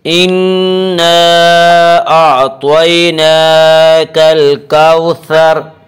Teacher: آگے آیت وقف کریں گے، اور را کے اوپر زبر ہے، حالت وقف میں زبر کو جزم سے بدل کر پڑھیں گے